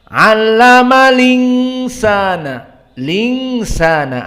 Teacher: Lalu hamzahnya hilang, harokatnya saja yang berpindah kepada lam. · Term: naql